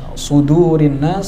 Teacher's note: sod sama dalnya, sodnya tebal, dalnya tipis